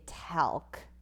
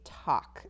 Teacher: And that's kind of tricky because we see the L here, and that's not a vowel, but it does change the way that this A sounds. We don't say talc, we say talk, and it makes the ah sound.